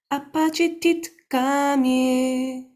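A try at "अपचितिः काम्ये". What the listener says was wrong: Apachiti kamye. It's not a takara. It's a visarga, and because of the following, it's actually dihwamulya, but you just go apachitik in the back. Apachitik kamye. Put the tongue in the back, guttural.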